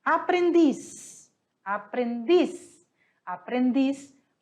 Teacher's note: Aprendiz, aprendiz, aprendiz. A sílaba tônica está em dis. Ela é uma aguda.